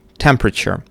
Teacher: The stressed syllable is the first one. You can see in the transcription you have this stroke.